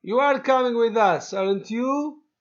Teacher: the rising intonation in tag question to confirm information